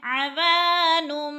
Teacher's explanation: اب ادھر سے دوبارہ مفرد پڑھنا ہے، عوانم، وا الف مدہ، الف خالی سے پہلے واو کے اوپر زبر ہے، واو مدہ ہو رہا ہے، ایک الف کے برابر واو کو کھینچ کر پڑھنا ہے